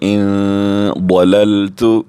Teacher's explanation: ضاد حروف مستعلی میں سے ہم پر کر کے بھی پڑھیں گے